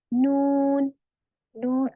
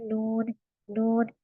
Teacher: इसमें गुन्ना की सिफत पाई जाती है जिसकी आवाज हमारी नाक में कुछ आती है